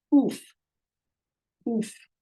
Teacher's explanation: Remember, ayin makes the vowel sound guttural.